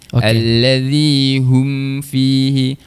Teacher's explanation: Mim huruf mim ni dia tidak bersifat syiddah, tidak bersifat tertahan. Dia tawas lajakkan sikit. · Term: dengung asliah